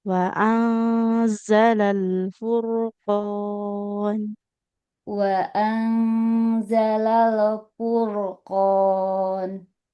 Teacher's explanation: Huruf ra sukun yang didahului dhammah dia tebal ya.